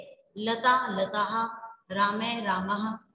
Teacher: विसर्ग लगा देते हैं तो वहां पर ह की ध्वनि आती है